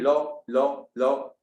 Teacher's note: अब लॉ में आप मूर्धा में रख के भी बोल सकते हो और दांत में भी आपको टच होती हुई दिखाई देगी।